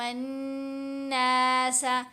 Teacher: الف اور لام دونوں حروف یہاں پر سائلنٹ ہیں، خاموش ہیں، کیونکہ نون حروف شمسی میں سے ہے